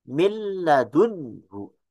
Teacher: Mil ladunhu kita lihat huruf nun sukun dan lam yang berharakat. Mil ladunhu itu diidghamkan. Kalau kita lihat ya nun dan lam dari sisi makhraj ber ee dari sisi makhraj dan sifat bisa kita sebut dengan mutaqaribain karena keduanya ee dua huruf yang makhrajnya saling berdekatkan. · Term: idgham sagir